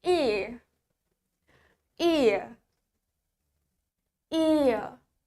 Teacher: In British English, the R is unclear. Bunyi R-nya tidak jelas, so it's become ear.